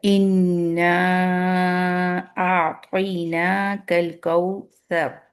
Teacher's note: ہم نون کے اوپر شد دیکھ رہے ہیں تو ہم نے اس میں اکمل غنہ کرنا ہے، اسٹریچ کرنا ہے۔ مد اصلی ہے انا کے اندر، یہ انا ایک ورڈ ہے، اس کے بعد حمزہ آ رہی ہے انشاءاللہ۔